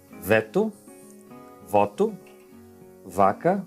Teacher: Ele dá uma leve mordida nos lábios inferiores com os dentes superiores. É V, V. Em português, em espanhol, alguns países se pronunciam essas duas letras iguais, ok? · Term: lábio-dental